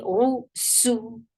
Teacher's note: Ru for dhamma, circle your lips. Make ra heavy.